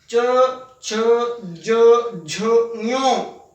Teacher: ये च वर्ग में आती है, तालु से बोला जाता है